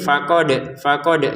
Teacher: Untuk faqadnya kita dalnya pantulin faqad gitu ya.